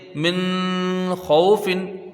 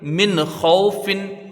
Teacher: نون کو ظاہر کر کے پڑھا جائے گا، یعنی اس میں غنہ نہیں ہوگا ایک الف کی مقدار والا. جیسے من خوفن، اس طرح سے اس کو نہیں پڑھیں گے، بلکہ اس کو ظاہر کر کے پڑھیں گے، من خوفن، بس جلدی سے پڑھ لیں گے. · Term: اظہار حلقی